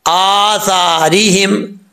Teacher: حمزہ کے اوپر سٹینڈ زبر ہے, کھڑا زبر ہے, ایک الف کی مقدار اس کو لمبا کریں گے. سا کا جو مخرج ہے آپ کو پہلے بتا چکا ہوں, زبان کا سرا اوپر والے دانتوں کے اندرونی کنارے سے لگے تو سا پڑھا جاتا ہے، سا۔